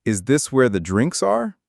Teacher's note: And listen to the intonation on that question. It's a yes no question, so the pitch goes up at the end.